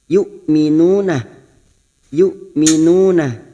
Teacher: Hamzah sukun jangan samakan dengan ain. Hamzah sukun memiliki sifat sidah. Kita baca jelas.